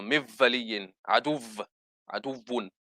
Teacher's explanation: when waw comes with mushaddada, waw with tashdid, they pronounce it for some reason as a V. So mivvaliyin, aduvun, instead of as a waw.